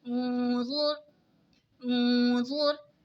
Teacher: नून साकिन के बाद हुरूफ़े इक़फ़ा का ज़ आ रहा है तो इक़फ़ा होगा यानी गुन्ना करके पढ़ेंगे। रॉ साकिन से पहले पेश है तो रॉ साकिन को मोटा पढ़ेंगे।